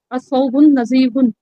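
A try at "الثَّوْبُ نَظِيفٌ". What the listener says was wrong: الثوب نظیف بدون التنوین.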